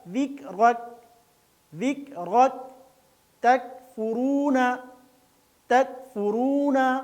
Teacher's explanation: اور کاف بغیر ہلائے باریک پڑھا جائے گا